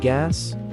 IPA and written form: ɡæs (Gas)